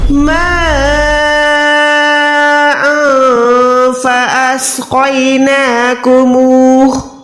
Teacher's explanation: سب سے پہلے میم کو 4 سیکنڈ لمبا کرنا ہے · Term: بڑی مد